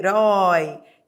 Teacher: Eu vou da vogal para a semivogal.